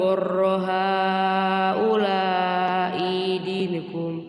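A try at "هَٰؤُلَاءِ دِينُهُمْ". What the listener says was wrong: Awas hati-hati. Haula'i di i-nya pendek.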